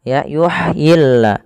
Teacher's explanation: Makhraj huruf ha kecil adalah dari tengah tenggorokan kita.